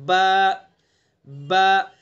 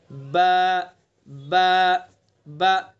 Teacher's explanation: बा का मखरज दोनों होंठों की तरी वाला हिस्सा